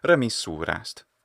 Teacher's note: We also have a contraction of remissura est. In my transcription here, I've written it with the apostrophe, but you could write it est, remissura est, but you still would pronounce it normally, remissurast.